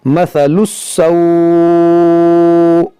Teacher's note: مثل السوء، اور یہاں پر مد لین عارض ہوگا، کیونکہ یہاں پر واو لین ہے، واو لین کے بعد یہاں پر حمزہ پر سکون عارضی آ رہا ہے رکنے کی وجہ سے، تو یہاں پر مد لین عارض ہوگا۔ مثل السوء، اس طرح سے ہم وقف کریں گے یہاں پر۔